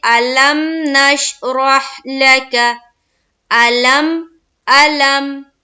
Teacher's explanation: میم میں آواز رک جا رہی